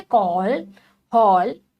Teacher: जैसे अंग्रेजी के अक्षरों में इस ध्वनि का प्रयोग होता है यह आ और ओ के बीच की ध्वनि है